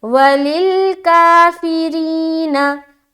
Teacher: रा को बारीक रखनी क्योंकि इसके नीचे ज़ेर आ रहा है